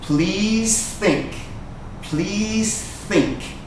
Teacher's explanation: please think please think there's no e sound in please and listen to the S and th sounds they're almost the same your mouth stays almost exactly the same please think please think so really we can run those sounds